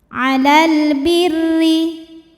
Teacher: Hukum alif lamnya dinamakan dengan alif lam qamariah. Karena alif lam menghadapi huruf qamariah yaitu ba. Maka lam sukun dibaca jelas atau disebut dengan izhar qamari. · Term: idhar qamari